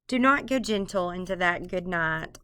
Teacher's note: there are 10 syllables 10 syllables 5 pairs of syllables and every other syllable is stressed so it's unstressed stressed unstressed stressed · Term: iambic pentameter